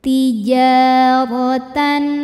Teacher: cara membacanya tanwin dibaca jelas jadi kalau tanwin bunyinya n maka tetap n dan tidak ditahan